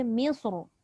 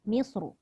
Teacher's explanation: Walaupun dia berbaris bawah pada mim, tapi sebab sad itu tebal, maka ra itu mengikut tebal.